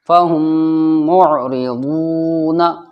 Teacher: ضاد واو پیش وو، واو ساکن سے پہلے ضاد کے اوپر پیش ہے، واو مدہ ہوگا، مدہ بولتے ہیں کھینچنے کو، تو یہاں پر یہ کھچ کر پڑھا جائے گا